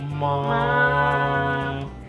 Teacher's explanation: First sound just ma. Stay one tone, right?